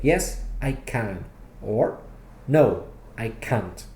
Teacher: in your answer, do stress the word can if it's positive, or can't if it's negative.